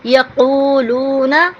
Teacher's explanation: قاف کی آواز کو ہم حلق سے نکالیں گے